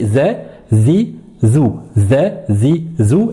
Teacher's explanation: ce n'est pas une lettre emphatique, c'est une lettre qui est amincie, une lettre légère. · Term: la lettre zel